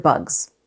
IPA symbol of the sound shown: z